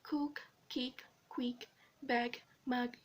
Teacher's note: Velars. The sound produced when the back of the tongue touches the velum.